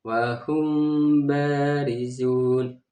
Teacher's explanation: Cara membacanya ini harus samar dan juga ada dengung. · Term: ikhfa syafawi